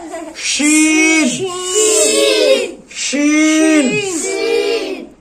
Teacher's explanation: জিহ্বার মধ্যখান থেকে উচ্চারণ হবে শিন শিন